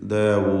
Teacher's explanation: വാവിനെ 4 ഹറക്കത്തിൻ്റെ അളവിൽ അല്ലെങ്കിൽ വീണ്ടും 5 6 ഹറക്കത്തിൻ്റെ അളവ് വരെ ദീർഘം നൽകി ഇഷ്ബാ പൂർത്തിയാക്കാവുന്നതാണ്. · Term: മദ്ദ ആരിദുൽ സുക്കൂൻ